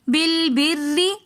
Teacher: زیر کے ساتھ ہم نے باریک کر کے پڑھا، اسی لیے اس را کو ہم باریک کر کے پڑھیں گے۔